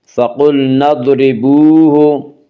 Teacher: وا مدہ وہ واو جو ساکن ہو اس سے پہلے پیش ہو، وا مدہ کو ایک الف کے برابر کھینچ کر پڑھیں گے